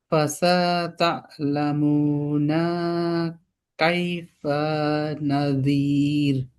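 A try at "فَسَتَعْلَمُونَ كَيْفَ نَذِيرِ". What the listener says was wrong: ফাসাতা, আইনের মধ্যে সুকুন, ফাসাতা'লামুনা, নাতে টান হবে না, ফাসাতা'লামুনা কাইফা নাযির।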